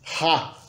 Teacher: E a letra R, o fonema do rótico, o fonema ra, do hebraico arcaico, no hebraico moderno israelense, é pronunciado de maneira gutural, ha, como em alemão, como em francês, devido à influência, claro, do alemão.